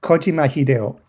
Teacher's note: if you translate it into American pronunciation you would stress the first syllable and not the second one